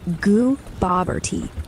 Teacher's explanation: Stress on the bob.